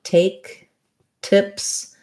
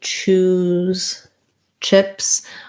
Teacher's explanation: For the t of tips, you should hear the kind of burst of air.